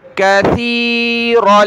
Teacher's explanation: سا پر زبان نکالنی ہے